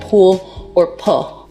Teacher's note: L vocalization. So that's an L turning into a vowel in a word like pool or pull.